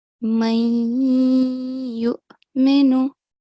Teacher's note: the nasal sound should be held for two seconds